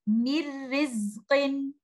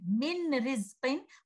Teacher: You don't hear any gunna. You don't even hear the makhraj of letter noon. We don't say min rizqin. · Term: complete merging